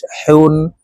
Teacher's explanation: হলকের মধ্যখান থেকে পড়তে হবে কারণ হার মাখরাজ হলকের মধ্যখান থেকে হবে